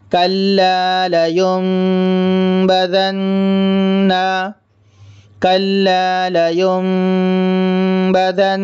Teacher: نون ساکن کے بعد با ہے، اس لیے نون ساکن کو میم سے بدل کر غنہ اور اخفا کے ساتھ پڑھ رہے ہیں